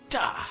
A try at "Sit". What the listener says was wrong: You don't say "ter," you say "t."